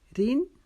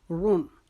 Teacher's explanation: را کو پیش کی وجہ سے موٹا پڑھیں گے